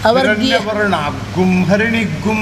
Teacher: ಅನುನಾಸಿಕದ ಮುಂದೆ ಸೊನ್ನೆ ಬಂದರೆ ಆಗ ಅದು ಗುಮ್ಮೆ ಆಗಬೇಕು